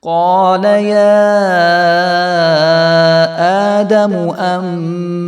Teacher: قال يا آدم أنبئهم، تو یہاں پہ پھر اقلاب کریں گے ہم، نون ساکن کے بعد جو ہے وہ با آ گیا ہے تو یہاں پہ اقلاب ہوگا